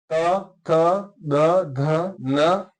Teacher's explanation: त थ द ध न, इसको याद करने का सबसे अच्छा तरीका है कि आप उच्चारण करते समय ध्यान दें कि आपकी जो जीवा है ना वो दांत पर स्पर्श कर रही है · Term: दंत्य